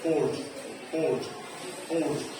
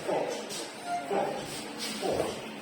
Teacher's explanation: But the O in English is not rounded when you pronounce it.